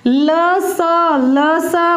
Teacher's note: ल स बोलते ही जीभ दांतों से स्पर्श हो रही है, ये दोनों हो जाएंगे दंत्य।